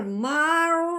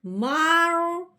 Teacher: रॉ मोटी है, रॉ साकिन से पहले ज़बर है